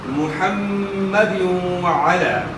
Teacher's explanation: میم مشدد ہے، اس کے اندر غنہ ہوگا۔ پیش کو آپ نے معروف ادا کرنا ہے۔